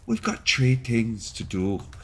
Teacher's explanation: you can take the TH sound and turn it into a hard T